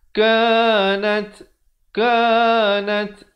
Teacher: ada bunyi hamasnya, bunyi angin di situ